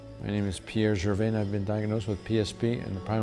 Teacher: there's a bit of nasality to it and he had some hesitations